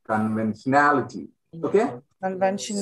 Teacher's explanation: primary accent is on the na sound